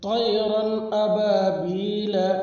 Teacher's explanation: لام کے اوپر زبر ہے، زبر کو جلدی پڑھے، تھوڑا بھی نہ کھینچے